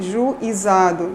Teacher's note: Então, há grupos de falantes que, ao pronunciarem a palavra juizado, produzem um ditongo crescente, ou seja, a proeminência acentual é na segunda vogal, Então, a gente parte da semivogal do U para a vogal I, E aí, juizado, Então, a gente tem que os ditongos crescentes apresentam a sequência glide vogal.